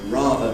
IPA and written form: ˈrɑːðə (rather)